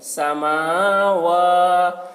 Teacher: میم اور واو دونوں میں کھڑا زبر ہے تو دونوں کو کھینچ رہے ہیں